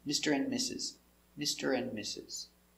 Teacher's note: When you have ND with a consonant after, the D is silent, especially for the word and